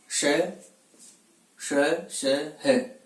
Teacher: जिन वर्णों का उच्चारण करते समय श्वास वायु कुछ गर्म होकर के घर्षण के साथ मुख द्वार से बाहर की ओर गमन करती है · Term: ऊष्म वर्ण